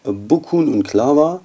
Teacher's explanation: weil hier Monophthonge erhalten sind, die Sie normalerweise im Hochdeutschen auflösen würden